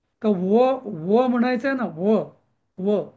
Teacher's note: तुम्ही दात आणि ओठ या दोघांची मदत लागते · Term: वकारस्य दंतोषठम